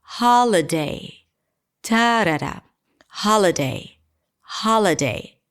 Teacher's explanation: all of a sudden the ha is really long because it's the primary stress. Ha, l, really short, holiday, ta-da-da, holiday, holiday.